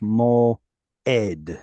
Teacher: most people just treat it like an aleph, like it's a glottal stop or silent